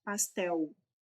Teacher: a letra L no final da palavra tem som de U na maior parte das regiões do Brasil